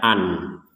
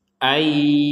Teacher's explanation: Yang pertama, memasukkan nun kepada ya, sehingga jangan lagi dibaca an.